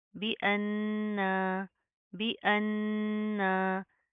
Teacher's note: दाल के ऊपर जज्म है, कलकला करेंगे, बी अन्ना, बी अन्ना। नून के ऊपर शद है, गुना करेंगे और फिर साथ का अलिफ पढ़ा जाएगा।